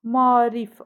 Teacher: A-nın biri düşür və digəri uzun tələffüz olunur. Ahəng qanuna tabe deyil.